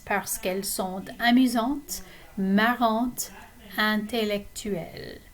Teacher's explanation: we drop the E on que when it's connecting to a word that begins with a vowel